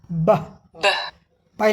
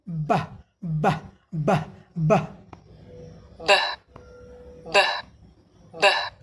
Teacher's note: इसमें कंपन होता है गले में